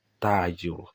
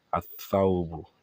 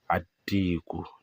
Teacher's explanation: This lam will not be pronounced. It's going to be embedded in the Harfu Shamsiya